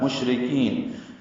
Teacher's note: شین ساکن پہ ہمس اور تفشی ہے، آواز منہ میں پھیلتی ہے